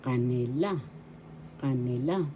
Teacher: third syllable has the accent or also you could have the accent in the first